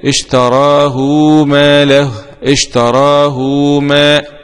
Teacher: هكذا بإشباع الهاء مع المد بالواو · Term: صلة الهاء